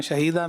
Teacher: इसी तरह शहीदा में भी अच्छा वक्फ किया, लेकिन 2 ज़बर की तनवीन को जब वक्फ में پڑھیں گے تو ایک الف سے بدلیں گے